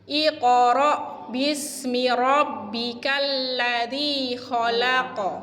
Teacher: Yang di tengah-tengah namanya kolkolah sugro, yang di belakang namanya kolkolah kubro.